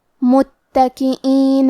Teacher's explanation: کلمت متکئین میں تا پہ تشدید ہے تو ہمیں 2 حرف کے برابر تا کو پڑھنا ہے